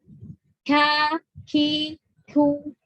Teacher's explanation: Pangkal lidah bertemu dengan langit-langit ya, langit-langit lunak dan keras. Jadi perbatasan. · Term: kaf